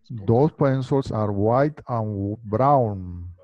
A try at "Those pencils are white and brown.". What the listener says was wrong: No digas those. Not those, sino those. Those pencils are white and brown. Te sigue sonando those. Que empiece vibrando la lengua y sobre los dientes. Bueno, dicho, haz este sonido. Todos hagan este sonido. La lengua sobre los dientes y digan.